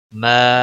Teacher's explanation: ما الف مدہ ہے، 1 الف کے برابر کھینچ کر پڑھیں گے